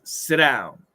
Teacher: in this situation, sit becomes a ghost T. It disappears. And the down is there.